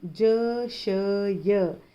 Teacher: उसके बाद हमने देखा ज़बान के बीच से हैं ज, श, य। ज़बान और तालू के बीच के हिस्से को मिलाने से ज, श, य अदा होते हैं और ये तीनों भी बारीक सिफत वाले हैं, बारीक पढ़े जाएंगे।